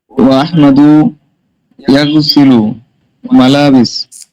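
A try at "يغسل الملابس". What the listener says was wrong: আরে ভাই দেখে পড়েন না, আলিফ লাম আছে না মালাবিসের সাথে।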